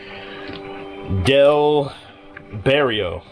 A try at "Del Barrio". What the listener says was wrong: Gotta roll your R's, man.